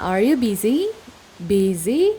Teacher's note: Kalau dia diucapkan itu intonasi akhirnya naik, rising intonation.